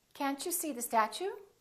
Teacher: when the t is followed by a u it becomes Chu